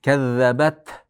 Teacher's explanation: Qarang, kazzabat ka ingichka zada tashdid bor. Kazzabat tada hams bor. Kazzabat havo chiqadi.